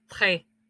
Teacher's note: es una E más abierta